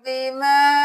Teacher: मद है 5 उंगलियों के बराबर खींचे